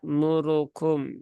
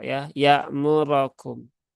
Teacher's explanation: Roknya itu dibaca fathah ya, bukan dibaca dhammah. Memang di sini seringkali tanpa disadari ya terbacanya dhammah ya murukum ya, harusnya dia dibaca fathah menjadi ya muro ya murokum.